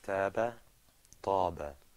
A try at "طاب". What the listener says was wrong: Very good. You notice that the ta was a little bit harder to pronounce? Try it again.